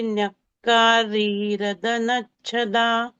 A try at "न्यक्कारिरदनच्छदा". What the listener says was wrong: Bhagini, it is Nyakari Radanachada. Ri is Rasva.